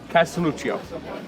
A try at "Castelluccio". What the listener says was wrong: Yeah, you don't have to say EO at the end. Castelluccio.